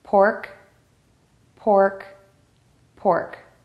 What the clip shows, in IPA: pɔrk